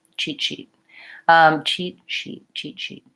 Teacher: If I were saying cheat, I would actually have to break a little bit. When I say cheat sheet, I am gliding a little bit more, and so my SH sound is longer.